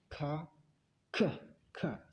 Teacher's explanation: Yang benar, ada letupan, ada ledakan.